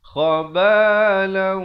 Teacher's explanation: Khabalau, di sini didengungkan, tanwin bertemu waw, idgham bi gunnah, dengung 2 harakat